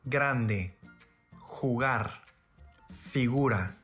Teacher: the letter G is same as a typical English G sound, except that it's fully voiced